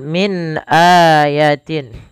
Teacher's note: min ada nun mati bertemu hamzah, maka dinamakan dengan bacaan izhar. Suara nunnya harus dibaca dengan jelas.